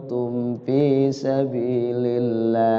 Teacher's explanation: izhar syafawi terbaca jelasnya di bibir Ya enggak boleh disamarkan itu mimnya